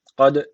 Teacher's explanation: d harfi cezim almış burada kalkale var ağızdan vurguluyoruz